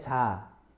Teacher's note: Parang nagda-down konti yung tone, no?